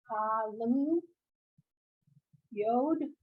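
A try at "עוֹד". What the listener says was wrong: Ode, the ayin has no sound at all, so it's ode.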